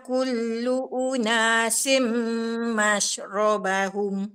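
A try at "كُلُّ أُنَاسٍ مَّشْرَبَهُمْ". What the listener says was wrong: Dia tidak sim. Kalau sim sin bawah c. Sin bawah, sin baris bawah kita sebut bunyi apa? Tak, sin baris bawah bunyi apa? Sin baris atas bunyi sa. Sin kalau baris atas bunyi apa? Sa kan? Sin baris atas bunyi sa. si.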